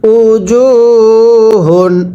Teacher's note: পেশের পরে ওয়াও সাকিন এক আলিফ টানতে হবে, দাল দুই পেশ দুন, উ দুন।